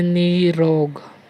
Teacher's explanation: जब हम र का उच्चारण करते हैं तो हमारी जिह्वा 2-3 बार कंपन करती है। जैसे निरोग, कंपन उत्पन्न होती है। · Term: प्रकंपित व्यंजन